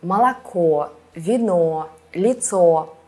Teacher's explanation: the last vowel is stressed, so we can hear that it's O, not A.